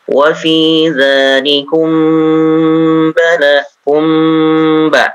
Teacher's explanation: mim sukun ketemu dengan ba ditahan ya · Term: ikhfa syafawi